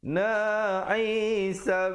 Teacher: sab ada pantulan di situ, qalqalah sughra.